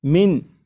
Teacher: تو یہاں پر یہ جو من ہے اس کا جو نون ساکن ہے، جب نون ساکن کو میم میں ادغام کریں گے تو نون ساکن کی آواز پھر نہیں آئے گی، بلکہ میم کے بعد میم کی آواز آئے گی، اور یہاں پر غنہ بھی کریں گے اور اسے پڑھیں گے مم مثلیہ۔